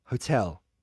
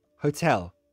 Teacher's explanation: the final l in hotel should be a dark l right the l is at the end of the word so